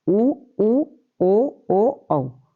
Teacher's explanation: इनमें मुंह हमारा व्रत के रूप में गोल रहता है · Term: व्रत मुखी